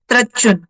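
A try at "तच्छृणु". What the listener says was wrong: త్రా లేదు, తచ్చుణు.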